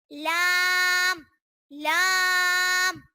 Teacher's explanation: जबान का किनारा और दुआइक से सनाया तक के मसूड़ों से अदा होता है